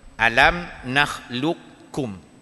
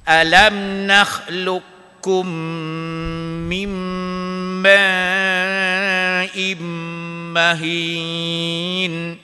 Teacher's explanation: Qaf tu tak bunyi dah. Qaf tak bunyi, tidak ada qalqalah lagi. Tinggalkan qalqalah, masuk huruf kaf tu.